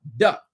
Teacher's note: It's impossible because once it's off your tongue, it's gone. There's no way to elongate the touch of the tongue to the top of your palate.